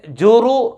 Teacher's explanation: را کے اوپر پیش ہے تو اس را کو پر پڑھیں گے، موٹا کر کے پڑھیں گے